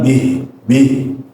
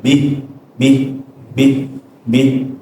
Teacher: kalau dia berhenti sebelumnya kasrah maka dia bacaannya tipis saja. Bih, bih, bih bih.